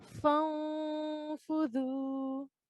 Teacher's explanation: we have fa here before noon sakin, which means we can produce a 2-second nasal sound.